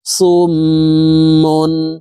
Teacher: বামে মিমে এর উপরে তাসদিদ আছে এই কারণে এই সদ হরফ তাসদিদ ওয়ালা মিমের সাথে নাকের বাঁশি থেকে তিন সেকেন্ড পরিমাণ গুন্না করে ধরে রেখে পড়তে হবে দেখুন এইভাবে পড়বো সদ মিম পেশ সুম মিম দুই পেশ মুন